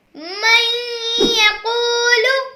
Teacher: اس میں نون ساکن کے بعد یا آ رہا ہے جو حروف یرملون میں سے ہے، اس لیے یہاں ادغام کا قاعدہ ہوگا، یعنی غنہ کریں گے